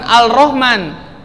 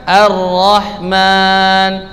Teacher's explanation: lam tarif yang huruf lam ya tidak dibaca Contohnya apa ar-rohman cara membaca ar-rahman bukan al-rahman tidak tetapi langsung dibaca arohman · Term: lam syamsiah